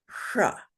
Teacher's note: a mark on an S you can safely pronounce it sh this particular s is actually a palatal s